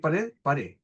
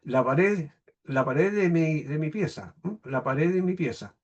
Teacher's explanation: la siguiente pérdida de D en posición final